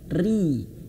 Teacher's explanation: huruf ro yang berharokat kasroh bergaris bawah ini maka harus ditipiskan. Ri.